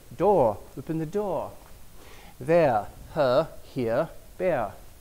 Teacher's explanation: in British, standard British, and a lot of British varieties, you drop the R and the vowel becomes longer. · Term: non-rhotic English